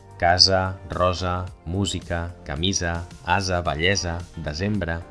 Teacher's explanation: El primero se llama ese sonora, porque hace vibrar las cuerdas vocales